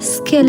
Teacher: Its pronunciation is accompanied by an explosive puff of air. With a palm held in front of the mouth, skill is demonstrably pronounced unaspirated.